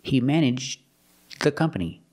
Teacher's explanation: You make a stop D and it links together with the, so you don't really hear the D.